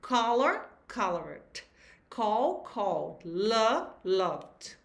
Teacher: a terminação em D, ED, vai ter som de D somente e não cria uma nova sílaba